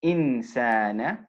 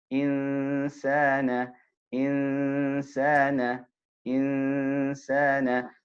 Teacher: Insana, right? So it's, we put our tongue in a position close to but not touching the makhraj of sin. So we're moving towards that, and we hold the sound with a ghunna, then we move onto the sin, right?